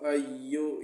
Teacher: یا کو حمزہ کے ساتھ سختی کے ساتھ ملا کے پڑھنا ہے۔ یا کے اوپر تشدید یعنی شد ہے۔